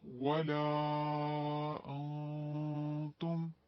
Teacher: ولا پہ اور انتم ان دونوں کے درمیان مد منفصل 3 سے 4 حرکت کھینچ کے پڑھیں گے